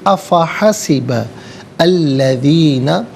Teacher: آ فا حسب ملا کر پڑھیں گے، افا حسب الذین، حسبہ میں با پر زبر ہے، اس سے الذین کے لام کے ساتھ ملائیں گے، درمیان میں سے الف یعنی حمزہ کو حذف کیا جائے گا. ہم پڑھیں گے افحسب الذین کفروا، را پر پیش پر کر کے پڑھا جائے گا.